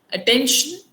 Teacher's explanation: attention, the stress is on the second syllable